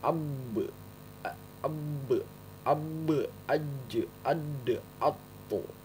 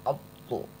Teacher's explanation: Apabila huruf to ini mati atau sukun harus dipantulkan, atau huruf to ini diwakofkan, dipantulkan ya, dipantulkan. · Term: huruf pantulan